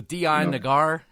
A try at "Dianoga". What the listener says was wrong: You added the R on the end there.